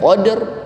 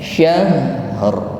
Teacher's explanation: pada ayat pertama getarannya qadr langsung atau lebih cepat daripada ayat ketiga syahr